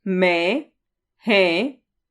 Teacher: जब स्वरों का उच्चारण मुख व नाक दोनों से होता है तब उन्हें अनुनासिक स्वर कहते हैं